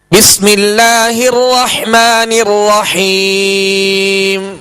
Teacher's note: تو راہ پر زبر یا پیش ہو تو راہ کو پر یعنی موٹا پڑھیں گے. اب راہ کو پر کرتے ہوئے اس بات کا خیال رکھیں کہ ہونٹوں کو جنبش یا ہونٹ گول نہ ہو